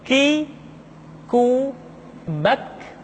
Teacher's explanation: Diucapkan dengan mengangkat pangkal lidah kita ke posisi di depan huruf Qaf. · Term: huruf K